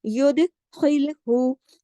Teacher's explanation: لام کو ہلا کے نہیں پڑھنا، جماؤ کے ساتھ پڑھنا ہے، باریک پڑھنا ہے، ہا کو بھی باریک پڑھنا ہے۔